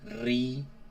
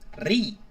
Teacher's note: you say río, where we're stressing the I, río. So it's written on the I.